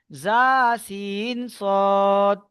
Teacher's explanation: 13 নম্বর মাখরাজ, 13 নম্বর মাখরাজ জিভের আগা এবং সামনের উপরের এবং নিচের দুই দাঁতের আগার সাথে লাগিয়ে উচ্চারিত হয় জা সিন সদ